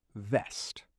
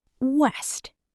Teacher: For the V sound, your teeth gently touch your lower lip. But for W, your lips form a round shape.